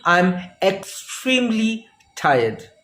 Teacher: you are putting the stress on the intensifier extremely and you mean how much tired you are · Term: emphatic stress